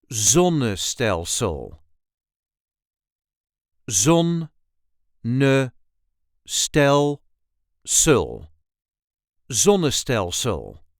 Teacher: We put the emphasis on the very first syllable.